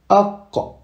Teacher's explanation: Ici, le qaf vient du fond de la gorge.